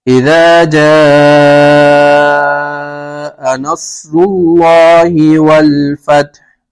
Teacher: الف مدہ ہو رہا ہے, الف مدہ کے بعد حمزہ اسی کلمے میں ہے تو مد متصل